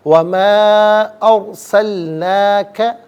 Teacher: را ساکن ما قبل حمزہ پر زبر، را ساکن کو پر کر کے پڑھیں گے